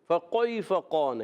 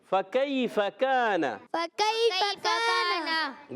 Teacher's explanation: یا لین نرمی سے ادا کریں گے، کاف کو باریک